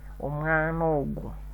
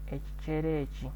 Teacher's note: So we have, when a word ends in a particular vowel and it occurs with another word which begins with a different vowel, then one of them can be deleted and the remaining one must be lengthened